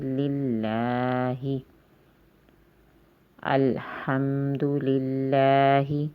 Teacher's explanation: الحمد، الحمد ایسے نہیں پڑھنا بلکہ الحمد، لام زیر لل، لام اللہ کے لام کے نیچے زیر آ گیا ہے پہلے، لام کھڑی زبر لا، دو الف کے برابر لمبی آواز ہو جائے گی